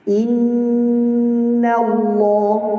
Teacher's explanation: inna panjang dia, gunnahnya panjang sekali. Tak boleh kita bilang inna Allah, tak. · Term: gunnah akmal